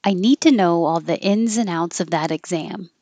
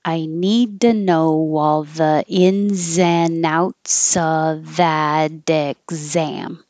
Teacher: the T changes to a d and you only hear one D